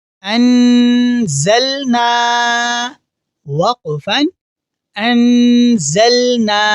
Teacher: یہاں ہم نون ساکن پر غنہ کریں گے